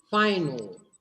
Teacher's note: English speakers, they dark all their L's. They darken all their L's at the end of the word. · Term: dark L